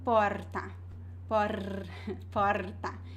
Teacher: Usually we have the fricative R, which has a vibration